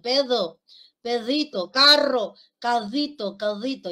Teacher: Ese es el sonido en realidad es una D debilitada